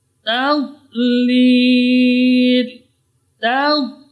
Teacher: Ta ketemu dengan dhad. Ta tetap dibaca tipis.